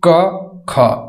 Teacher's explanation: ये कंठ से बोली जाने वाली ध्वनियां है, यानी कि क वर्ग के जितने भी अंतर्गत आते हैं वो सभी क्या है, कंठ से बोली जाने वाली ध्वनियां है। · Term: कंठीय ध्वनियां